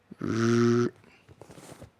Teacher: It is pronounced by the vocal folds vibrate, and is produced by forcing air through a narrow fluttering gap between the relaxed flat tongue tip and the alveolar ridge.